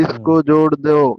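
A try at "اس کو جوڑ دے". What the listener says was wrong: दो হবে না, দে দে জোড় দে। দাল ইয়া মাজহুর দে।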